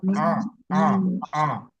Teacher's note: karena Ain dia keluar dari tengah tenggorokan tidak ada hubungannya dengan hidung